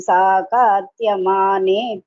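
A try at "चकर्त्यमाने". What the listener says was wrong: So that it is cha. The Tamil padichatnala sa varapadu. Cha chakarama varanam. Chakhadyamane.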